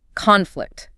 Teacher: As the noun, it's the disagreement itself, the clash, conflict, stress on con.